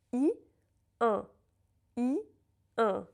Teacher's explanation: The only thing that moves is the back of my mouth, the soft palate